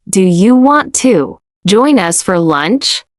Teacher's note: Let the question rise at the end and keep the tone friendly and light.